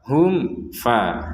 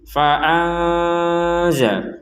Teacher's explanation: Jadi kalau jelas itu langsung saja hum fa, nggak ada unsur dengung atau samar sama sekali. Kalau ini memang samar ya harus disamarkan cara membacanya.